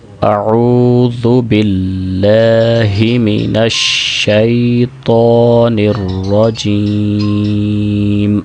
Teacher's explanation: شین کی جب ادائیگی کرتے ہیں تو آواز منہ کے اندر پھیل جاتی ہے، اس کے اندر ایک صفت ہوتی ہے تفشی، جس کی وجہ سے آواز منہ کے اندر پھیل جاتی ہے۔